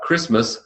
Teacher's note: But Christmas, suddenly the T goes away.